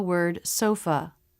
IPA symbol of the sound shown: ə